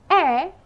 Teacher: is a low front unrounded vowel